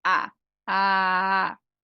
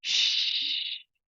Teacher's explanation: se eu falo por exemplo A a tem voz obviamente mas se eu falo sh não tem voz